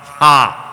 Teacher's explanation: ശ്വാസകോശത്തിന്റെ അടിയിൽ നിന്ന് പുറപ്പെടുന്ന ഗ എന്ന അക്ഷരത്തെ ഘ ആക്കുന്ന, ഡ എന്ന അക്ഷരത്തെ ധ ആക്കുന്ന, ബ എന്ന അക്ഷരത്തെ ഭ ആക്കുന്ന മഹാപ്രാണം ഹ. മനസ്സിലായോ?